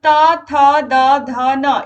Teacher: इनका उच्चारण स्थान है दंत आप इनको बोल करके देखिए आपके दांतों का प्रयोग होता है